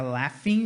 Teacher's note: esse GH tem um som de F, tá?